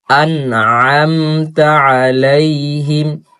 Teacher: নুনকে সুন্দর করে ধরতে হবে, তারপর হচ্ছে গলার মধ্য থেকে আইন উচ্চারণ করতে হবে।